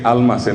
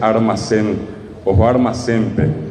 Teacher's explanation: la gente de Paraguay sustituye la L por la R, y en vez de decir almacén, dice armacén, o armacente.